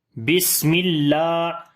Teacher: سین کے اندر سیٹی کی آواز آئے گی اور سانس جاری ہوگا اور سین کو باریک بھی پڑھیں گے۔ بس یعنی کہ صفت ہمس ہوگی، سانس جاری ہوگا۔